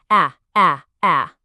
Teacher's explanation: open your mouth and it's a quick sharp ah